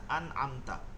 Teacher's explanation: এই যে নুন সাকিনের পরে আইন আছে আইন এর জন্য এটা গুন্না হয় না